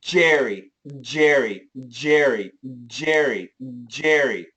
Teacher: when we do the J, if we really emphasize, we actually hear the vibration before the sound